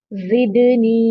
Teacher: यहां पर नी पर या मद्दा है इसको टू काउंट करेंगे